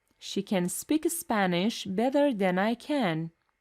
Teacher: the first can is the weak form and the second can is the strong one